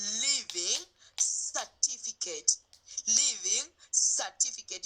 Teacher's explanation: there is an r there but we are not pronouncing that r we are making it to be silent